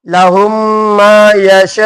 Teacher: یہ ایک ہی کلمہ ہے کیا ہے اس لیے کیا ہوگا مد متصل اس لیے میں نے لمبا کھینچا